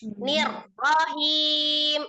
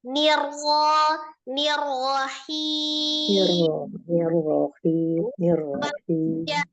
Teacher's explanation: Nah, itu berarti naber. Sementara ro-nya harusnya tidak bernaber. Hanya ditebalkan saja.